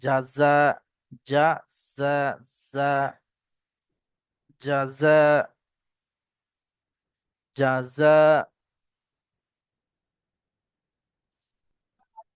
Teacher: জাযা, প্রথমটা জিম আর দ্বিতীয়টা হলো যা। জাটা উচ্চারণ হবে জিভের এই আগাটা উপরের দাঁতের গোড়ায় লাগবে।